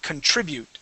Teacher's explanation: That word is contribute with the accent right on that I.